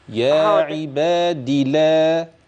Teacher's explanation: الروايه في كلمه يا عباد لا بحذف الياء وقفا ووصلا يعني هنطق د مكسوره بس